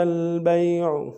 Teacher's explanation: با کو یا کے ساتھ ملانا ہے، یا لین بغیر کھینچے پڑیں گے، عین کو گہرائی سے ادا کریں گے